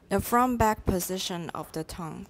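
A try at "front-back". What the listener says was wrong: The from-back position. There is a stop at the end of front. Now, these stops are serious business. When you come to a stop, P-T-K-B-D-G, stop, stop, just 停下来. You cannot keep going.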